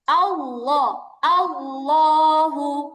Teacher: আল্লাহ শব্দের মোটা করে পড়ার সময় জিহবার আগা কোথায় লাগবে দাঁতের আগায় লাগবে